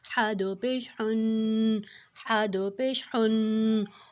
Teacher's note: اب حا جو ہے وہ حروف حلقی ہے، اس کو ہم نے حلق سے نکالنا ہے